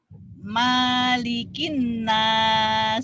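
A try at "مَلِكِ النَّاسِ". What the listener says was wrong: Berarti selama ini sholatnya kamu salah. Maknya pendek di situ. Kalau Fatihah panjang. Maliki yaumiddin. Di sini pendek. Malikin nas.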